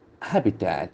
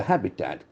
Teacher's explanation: The accent falls on the first syllable.